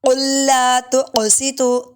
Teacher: قاف پہ کلکلا ہوگا، موٹا بھی ہے